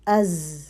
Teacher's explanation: حروف جو زا اور سین ہیں ان میں سیٹی کی آواز جو ہے وہ باریک ہوگی. زا میں جو ہے وہ تھوڑا بزنگ بھی آئے گی